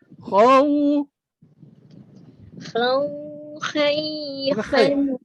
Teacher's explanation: terangkat lidah, pangkal lidah, bukan hujung lidah, bukan tengah lidah, pangkal lidah, base. Ambil daripada khaw. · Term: isti'la